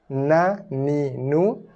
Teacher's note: ujung lidah sentuh gusi atas ataupun ada langit depan.